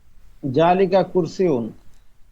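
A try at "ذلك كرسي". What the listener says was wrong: জালিকা, জালিকা না, আরবি যেহেতু জাল নরম হবে, যালিকা কুরসিয়ুন, যালিকা কুরসিয়ুন।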